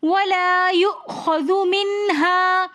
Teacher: منہا میں نون ساکن حالت میں آ رہا ہے اور آگے حروف ہلکی میں سے ہا رہا ہے تو یہاں پر ہم غنہ کچھ بھی نہیں کریں گے بلکہ واضح کر کے پڑھیں گے